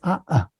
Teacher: el sonido en medio es el cierre glotal